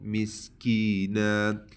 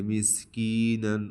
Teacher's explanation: سن یہاں آخر میں نون پر دو زبر آئے، ٹھیک ہے، تو اس کا قاعدہ تھوڑا مختلف ہے، ٹھیک ہے۔ تو یہ جو دو زبر ہے اس کو وقف کی حالت میں ایک الف کے برابر لمبا کریں گے